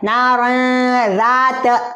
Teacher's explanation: نار ذات اس طرح سے. یہاں پر اخفا ہوگا. اخفا ایک الف کے برابر.